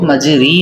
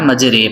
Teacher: اسی طریقے سے ہم نے امالہ کے بارے میں سنا تو امالہ زبر کو زیر اور الف کو یا کی طرف مائل کر کے پڑھنے کو امالہ کہتے ہیں۔ امالہ کی را کو قطرے کی را کی طرح پڑھیں گے، یعنی ری نہیں بلکہ رے پڑھیں گے